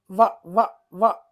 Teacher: పెదవి దంతం రెండు కూడా టచ్ అవుతాయి కాబట్టి దంతోష్టం అంటారండి